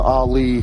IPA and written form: ɑːˈliː (Ali)